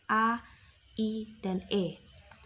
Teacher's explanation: vokal tak bulat diucapkan dengan bentuk bibir tidak bulat atau terbentang lebar, misalnya A, I, dan E.